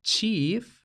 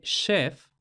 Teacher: la diferente pronunciación entre chief con este sonido che y la pronunciación de chef con este sonido she